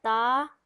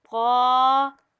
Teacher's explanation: تا کو ہم لوگوں نے نرمی سے پڑھا ہے تا، اور قا کو ہم موٹا کر دیں گے قا